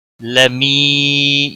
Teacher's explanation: لمی یا مدہ ہے ایک الف کے برابر کھینچ کر پڑھیں گے